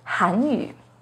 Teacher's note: The pinyin and tone for 韩语 has a second rising tone on 韩